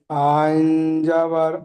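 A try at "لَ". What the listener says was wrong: আইন নই, লাম।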